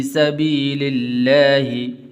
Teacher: لفظ اللہ کو باریک کر کے پڑھنا ہے